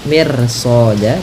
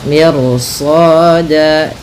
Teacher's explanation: Meskipun kaidah yang pertama ketika ada huruf ro sukun didahului kasroh itu tipis, tapi karena datang setelah huruf ro itu huruf isti'la, huruf yang tebal, dan huruf yang pangkal lidahnya terangkat, dan dimana shad ini itu huruf isti'la, maka ro-nya menjadi tebal. Maka miru ya, miru soda, tidak mir soda, tidak dibaca, jangan dibaca kanat mir soda, tapi dia ro-nya tebal.